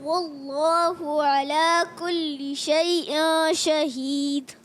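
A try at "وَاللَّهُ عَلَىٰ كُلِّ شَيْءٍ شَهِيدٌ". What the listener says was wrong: شیئن میں کیا کریں گے؟ اخفا کا غنہ بھی کریں. واللہ علی کل شیء شہید.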